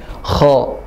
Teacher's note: kalau kha adalah suara yang tafkhim, mufakham, tebal, dan makhrajnya ada di ujung tenggorokan. Jadi suaranya masuk ke dalam.